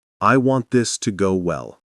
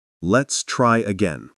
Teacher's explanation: Say these 3 lines, last word down, not up. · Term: 5-degree drop